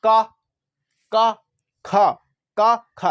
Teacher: उच्चारण करने पर आपको मिलेगा कि इनकी तंत्रियों में क्या नहीं होगा, कंपन नहीं होगा। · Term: अघोष